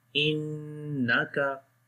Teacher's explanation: Hamza connect with the noon, make nasal sound, gunna sound.